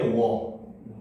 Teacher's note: U에서 시작해서 어로 가는 게 워.